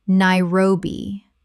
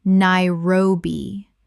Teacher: 3 syllables with the stress on the second.